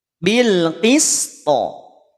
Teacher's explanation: Tahan ataupun bukan tahan, pertahankan ketipisan huruf sin.